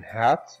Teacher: the only two glottal sounds that we have in the English language is the huh sound as in hat